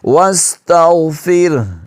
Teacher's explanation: آخر میں ہا کی جو آواز ہے بھاری وہ آئے گی